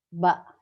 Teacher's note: Kalau ba magnetnya kuat, ba ya. Gigi bibir atas dan bibir bawah menutup rapat dengan sempurna, maka dihasilkan suara ba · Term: al-aswat asy-syafawiyah